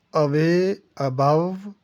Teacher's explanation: श्वा sound, ये बहुत अहम साउंड है, ये भी मुख्तसर ज़बर है की आवाज़ देता है, जैसे अवे, अबव, आगे ये जो लफ्ज़ आ रहा है ये गो नहीं है, इसको गाओ पढ़ते हैं।